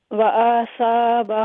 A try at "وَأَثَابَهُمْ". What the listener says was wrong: اچھا آ کو لمبا کیوں کیا؟ وَأَثَا نہیں آپ نے کہا وآسا. نہیں، لیکن ایک ساتھ اس کو تلاوت کرے. وَأَثَابَهُمْ، یہ ایک ہی لفظ ہے. وَأَثَابَهُمْ.